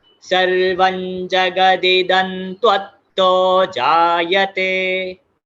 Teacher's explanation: ये जो है त्वत्तो, इसको जोड़ना है अगेन, त्वत्तो डबल त है